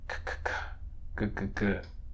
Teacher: And then for ka and ga, as in cat and get, the back of your tongue presses against your velum, the soft part at the back of the roof of your mouth. These are velar stops.